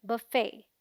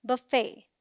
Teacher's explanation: the FET has a silent T, so it sounds like fay, as in say, and is the stressed syllable, meaning इस पर थोड़ा जोर देकर बोलेंगे fay, ना कि fe.